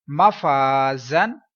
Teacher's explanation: زا کو پڑھتے ہوئے سختی آئے گی، سیٹی کی آواز، اور دو زبر جو ہیں اس کے اوپر، اس کے بعد الف ہے تو دو زبر کے بعد الف کو سکپ کریں گے، ہجوں میں نہیں پڑھیں گے، ہجے کرتے ہوئے، جوڑ کرتے ہوئے، سپیل کرتے ہوئے الف چھوڑیں گے۔